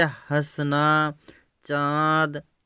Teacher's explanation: यह अनुनासिक स्वर का रूप है जिसका उच्चारण मुख व नाक दोनों से होता है, जैसे हंसना, चाँद।